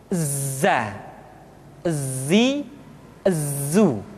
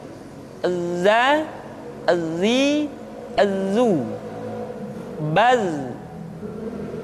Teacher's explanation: ketika kita mengucapkan huruf za, suara kita mengalir, akan tetapi nafas tidak boleh mengalir. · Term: al-jahr